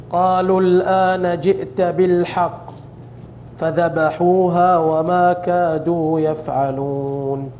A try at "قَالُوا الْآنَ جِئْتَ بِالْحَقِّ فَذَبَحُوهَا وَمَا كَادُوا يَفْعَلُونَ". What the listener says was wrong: طيب في مواضع الغنن كثير ناقصة يعني حاول تكملها.